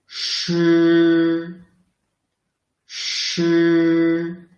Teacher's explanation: The sound is produced by rolling up the tip of the tongue very close to the hard palate without totally blocking the air and letting the air squeeze out through the channel.